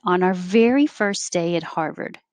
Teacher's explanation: very is higher in pitch and she steps down